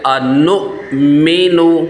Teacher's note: یہاں پہ حمزہ ساکنہ ہے، یہاں پر جھٹکا دے کر پڑھیں گے